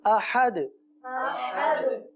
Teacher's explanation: جی آخر میں دال پر قلقلہ کریں گے